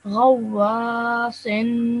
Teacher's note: So first you join the line to the waw and then you have the alif madda. So you stretch that sound for 2 seconds.